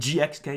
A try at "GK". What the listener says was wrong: GK, the X is silent, remember?